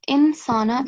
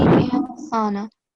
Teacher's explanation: the noon is going to be silent